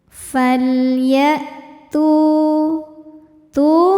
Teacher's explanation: Maka lam sukun dibaca dengan jelas. Falya, suara hamzah tertahan karena hamzah punya sifat namanya syiddah.